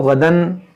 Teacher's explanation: रुकेंगे तो गदा पढ़ेंगे, मिलाएंगे तो गदन, फिर इज़हार होगा, तनवीन के बाद हमज़ा है